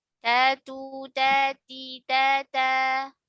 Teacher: Dari ujung lidah atau torful lisan bertemu pangkal gigi seri atas ya, atau belakang gigi seri atas.